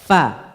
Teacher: Di bibir, bibir bawah dengan gigi seri atas, dengan ujung gigi seri atas.